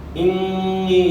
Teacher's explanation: انی یہاں جو ہے نون مشدد ہے، ایک الف کی مقدار کے برابر آپ نے یہاں غنہ کرنا ہے. اور پھر انی یہاں جو ہے یا مدہ ہے، یا ساکن سے پہلے زیر ہے، زیر کو آپ کھینچیں گے تو یاد آؤگی، ایک الف کی مقدار کے برابر یہاں مد ہوگی.